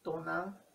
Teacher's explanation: si decimos nuestra madre, Tonan, se escucha sin la N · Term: Linking N